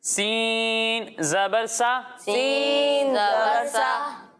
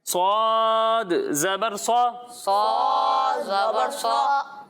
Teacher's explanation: جب ہم سین کی ادائیگی کریں گے تو اس میں سیٹی کی آواز آئے گی اور جب ہم صاد کی ادائیگی کریں گے تو اس میں سیٹی کی آواز تو آئے گی ساتھ میں اسے موٹا کر کے پڑھیں گے